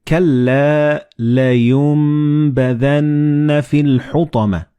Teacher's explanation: So the noon and ba, they will be assimilated together and you will pronounce them as meme.